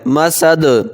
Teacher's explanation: مسد پہ بھی قلقلہ ہوگا، آخر میں دال ہے